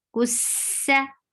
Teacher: And for seen, give safir, give rukhawa, and the sound will be light.